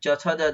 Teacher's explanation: च छ ज ज जो है इसका तालु से उच्चारण होगा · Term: तालव्य व्यंजन